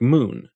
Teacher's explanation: in many dialects of English we tend to pronounce two vowels when we say a word like moon we start on ooh before we get to ooh moon in